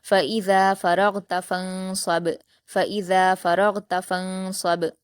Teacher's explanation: ساتھ پڑھیں گے، صاد پر حرکت ہے، با پر جزم ہے، صاد کو با سے ملا کر قلقلہ کے ساتھ پڑھیں گے